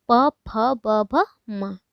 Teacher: ओष्ठ यानी कि दोनों होठों से मिलके होता है स्पर्श